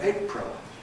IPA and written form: ˈeɪʔprəl (April)